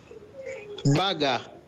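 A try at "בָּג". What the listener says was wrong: So there's no vowel under the gimel, so it's bag.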